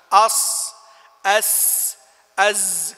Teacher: وهذه تسمى الحروف الأسلية لأنها تخرج من أسلته أي مستدقه